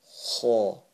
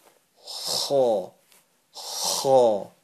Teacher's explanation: It originates from the top of your throat.